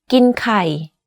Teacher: but the last word kai or x is in low tone you can hear that my pitch went slightly lower at the end of this sentence